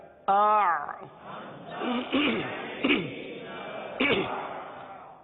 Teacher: حرف آئین کو ادا کرنا ہے, اور آئین کا مخرج کیا ہے؟ وسط حلق